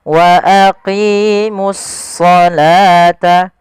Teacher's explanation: alif lam kita namakan dengan alif lam syamsiyah yaitu suaranya kita langsung ke huruf shadnya